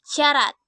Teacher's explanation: Bunyi S dengan ciri-ciri mati, laminopalatal, dan frikatif dengan contoh kata syarat.